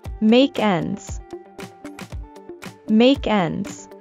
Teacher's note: In fast speech, we link the ending sound in make with the initial E in end